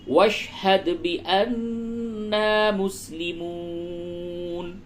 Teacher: نون مشدد ہے غنہ ہوگا اور الف مدہ ہے تھوڑا سا کھینچیں گے